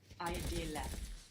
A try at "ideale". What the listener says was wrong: The I, we don't pronounce it like I, like in ideal, do we? How do we pronounce it in Italian? Like ink. You have a lot of vowels to think about here. English fuses them together. In Italian, you will take the time to pronounce each vowel, and then we will stick another E on the end, of course, for Italian.